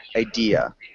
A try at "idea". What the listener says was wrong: And make sure you don't have an R sound at the end. It's just idea.